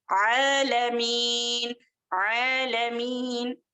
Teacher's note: عین جو ہے وسط الحلق سے ادا ہونے والا ہے. عالمین، عین وسط الحلق.